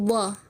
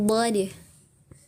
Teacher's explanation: huruf yang keluar dari dua sisi lidah bertemu dengan gigi geraham atas